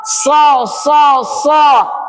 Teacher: bedanya sad ditebalkan pangkal lidah diangkat dia ditebalkan karena idbak